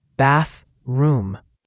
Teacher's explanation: bathroom has that tricky TH sound again, tongue between your teeth for the first TH.